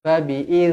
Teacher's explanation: dia tak ada bunyi buzzing pun, tak ada bunyi zzz, tak ada. Fabi'iz, iz, lembut je. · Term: zal